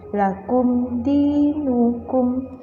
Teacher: maka wajib dibaca jelas jangan sampai didengungkan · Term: Idhar syafawi